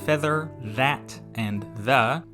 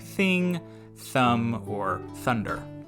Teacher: examples of the voiced sound are in words like feather that and the while the unvoiced is in words like thing thumb or thunder